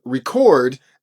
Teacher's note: However, if I use that same spelling and use it as a verb, it's going to be pronounced as record, and as you can see, that stress is now going to be placed on the second syllable